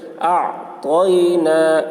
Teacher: اعطینا، یا کے اوپر جزم ہے، اعطینا، یا ساکن سے پہلے زبر ہے، یا لین ہوا، اس لیے یا لین کو نرم آواز کے ساتھ جلد پڑھیں، معروف پڑھیں، مجہول آواز سے بچیں۔